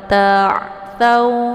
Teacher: Ta'thaw, jangan ta, ya. Karena posisi ain ini adalah keluarnya di tenggorokan bagian tengah. Jadi bukan lewat hidung, ya. Jadi nanti jangan dibaca ta'thaw, ya, tapi yang benar itu adalah wala ta'thaw fi, ya. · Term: ain sukun